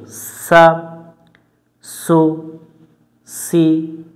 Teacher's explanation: সিন অক্ষর সামনের নিচের দাঁতের আগা থেকে শীষ দিয়ে পড়তে হয়